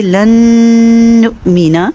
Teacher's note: وَإِذْ قُلْتُمْ يَا مُوسَىٰ لَن نُؤْمِنَ لَكَ وَإِذْ قُلْتُمْ يَا مُوسَىٰ لَن نُؤْمِنَ لَكَ حَتَّىٰ، یہاں پہ دیکھیے لن نؤمن، نون ساکن کا رول آیا ہوا ہے ادغام کامل بغنہ، یعنی پہلا جو نون ساکن تھا وہ اگلے نون میں مرج ہو گیا، ادغام ہو گیا، اس کا غنہ بھی ساتھ کریں گے، اس لیے یہاں غنہ کو ٹائم دے رہے ہیں۔